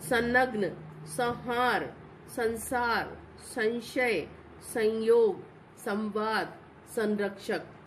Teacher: ना की आवाज आ रही है पर हमने यहाँ ना नहीं लिखा है, ऊपर बिंदी लगाई है। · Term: अनुस्वार